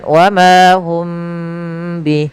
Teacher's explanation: berupa apa namanya mim mati bertemu dengan huruf ba maka ini cara membacanya yaitu suara mimnya ditahan jangan langsung dilepas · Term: Ikhfa Syafawi